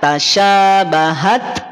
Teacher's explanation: karena Ta maftuhah ini sifat pada suaranya adalah syiddah atau kita kenal dengan terhenti suara maka kadar aliran nafasnya cukup percikannya saja · ketika hams pada huruf ta Yang sukun kadar aliran napasnya cukup kadar percikannya saja